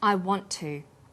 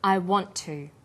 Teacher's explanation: is held slightly longer on the tongue then to is pronounced the T sound is pronounced only once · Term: consonant plus same consonant linking